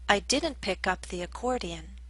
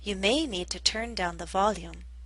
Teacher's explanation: in the first sentence, I stressed the particle, up. I didn't pick up the accordion. In the second sentence, I stressed the verb, turn.